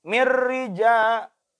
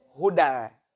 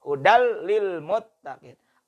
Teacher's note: Pathatain bertemu dengan lam. Dilebur bunyi N pada kata hudan ke dalam huruf lam di depannya. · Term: bila guna tanpa dengung